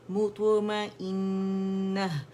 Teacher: कलकला की आवाज़ जो है ना हाफ ज़बर होती है, तो इसकी आवाज़ ऊपर की तरफ जाएगी, ठीक है। लेकिन ज़बर में जबड़ा ज़्यादा खुलता है अंदर से, ठीक है, मुंह ज़्यादा खुलता है, और हाफ ज़बर में क्या होता है कि कम खुलता है ताकि कलकला अदा हो जाए, ठीक है, वरना फिर वो क्या होगा, ज़बर की मानद हो जाएगा, ठीक है। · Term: मोटा कलकला